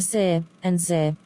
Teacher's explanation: produced by placing the tongue tip on or just in front of the alveolar ridge, the bump behind the upper teeth. The sounds are ser and zer.